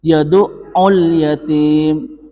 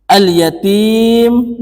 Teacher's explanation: dan lamnya itu tetap dibaca sukun, dan cara membacanya itu idhar, harus jelas. Yad'ul yatim, harus jelas makharijul hurufnya. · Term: alif lam qamariyah